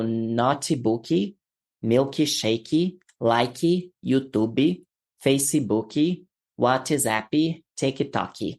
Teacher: many Brazilians tend to add a Y sound to words like notebook, milkshake, like, YouTube, Facebook, WhatsApp, TikTok, and others